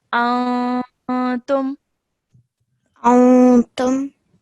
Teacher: you have to produce a nasal sound for 2 seconds